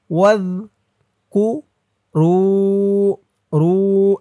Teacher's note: জালের উচ্চারণটা একদম নরম হবে, জিহ্বার মাথা ওপরের দাঁতের মাথার সাথে লাগবে।